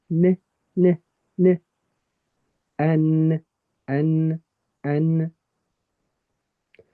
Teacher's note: That's your tongue touching the gums, the top of your gums from your teeth. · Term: the N part